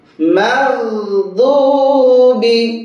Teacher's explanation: আর দদের উচ্চারণ জিহ্বার গোড়া থেকে।